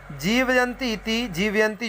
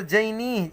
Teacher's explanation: वही कह रहे हैं कि अत्र माने अस्मिन् श्लोके जीवयंती इति, जीवयंती जो पद है, याह इति, याह जो पद है, और जैनी, ये जो जैनी पद है, अत्र माने इस तीनों पद, इन तीनों पदों में जकार यकारयोः एकत्र स्थाने, एक ही स्थान पर तालौ उच्चार्यत्वात्, तालु से उच्चारण होने के कारण सादृश्य माने सादृश्यता है